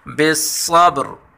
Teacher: یہاں را کے نیچے جب زیر پڑھیں گے تو باریک پڑھیں گے اور وقفن میں اس را کو پر پڑھیں گے